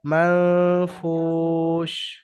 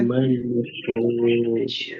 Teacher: দেখেন হরফে ইকফার 15টি অক্ষরের মধ্যে, এখানে হরফে ইকফার 15টি অক্ষরের মধ্যে এখানে ফা এসছে হরফে ইকফা থেকে, ফার্স্ট। তাই নুন সাকিনকে একালিফ পরিমাণ গুন্নাহ করে পড়তে হবে